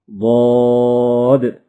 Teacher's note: زبان کی کروٹ اور اوپر کی داڑوں کی جڑ سے ادا ہوتا ہے۔